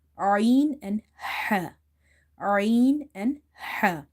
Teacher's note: Our throat is divided into three parts: lower, middle and upper part. And from the middle part of the throat we pronounce two letters, ain and ha. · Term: middle of the throat